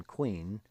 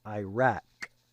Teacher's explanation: Kof, I've represented here with a Q, does not make a kwa sound as in queen, but rather a very hard K sound like the word Iraq